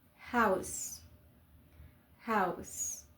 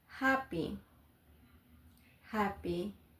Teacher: In Spanish, the letter H is silent, but in English it usually has a soft sound. It sounds like a gentle breath. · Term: The English H